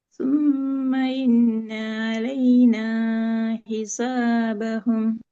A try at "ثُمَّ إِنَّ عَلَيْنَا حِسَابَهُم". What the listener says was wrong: இதுல அலைனா ஹிசா ரெண்டும் ஒரே அளவுக்கு நீட்டி ராகத்து எடுக்கணும். இன்ன நீட்டேலாது. ஈ வரல. வரல. இன்னன்னு தான் வருது.